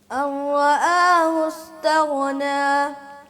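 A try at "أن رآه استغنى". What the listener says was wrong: آپ نے بھی غین کو ہلا دیا تھوڑا سا.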